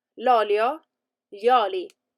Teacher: but l'olio has the accent at the beginning